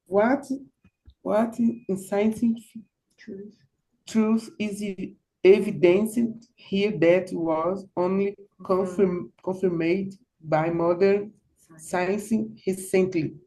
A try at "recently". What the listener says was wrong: Okay, and that's recently with a like more of a Spanish R. All right, no, so no carioca recently.